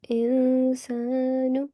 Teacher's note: So here you will do a concealed nasal sound. Insanu. This rule is called ikhfa.